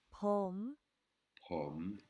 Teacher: On a bien entendu le H inspiré dans le P et l'intonation prom qui monte et qui redescend